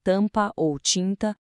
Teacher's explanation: É quando a gente tem um M ou N depois de uma vogal. Aqui o M e o N perdem o som de consoante deles. A única função deles é fazer a vogal sair meio pelo nariz · Um som anasalado, como em tampa ou tinta. Percebe que a gente não fala o M nem o N, eles só sujam o som na vogal, deixando ela nasal.